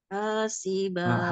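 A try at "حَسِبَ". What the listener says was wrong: hati-hati h-nya kepanjangan hasiba hasiba ha masih kepanjangan Bu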